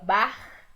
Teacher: Aqui o nosso R soa bar, feito aqui na garganta